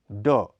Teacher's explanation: जब यह वर्ण अंत में प्रयुक्त होता है तो इसका प्राणत्व कम हो जाता है। ड, यह अल्प प्राण घोष ध्वनि है। इसका उच्चारण स्थान मूर्धा है।